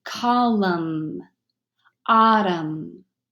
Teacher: the N is completely silent so you only hear the Elm mm as in column autumn